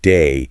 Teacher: A classic example is the a sound in a word like day can sound a bit more like die. >> And the slang is a whole other vocabulary list.